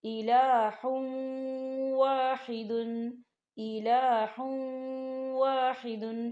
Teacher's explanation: غنہ ہوگا، اور ہا کے اوپر جو تنوین ہے اسے ہم واو کے اندر مدغم کریں گے